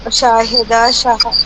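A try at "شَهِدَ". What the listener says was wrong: نہیں شاہدہ نہیں، شاہدہ نہیں، شین کے بعد الف نہیں ہے. شہیدہ شہیدہ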